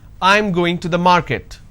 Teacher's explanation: now this is a statement and it's a flat intonation